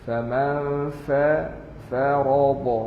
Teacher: Fa bibir masuk gigi. Faman farada, ra tebal.